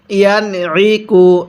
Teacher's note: নুন সাকিনের পরে আইনটি হলো ইজহারের হরফ, তাই নুন সাকিনটা আমরা স্পষ্ট করে পড়ব।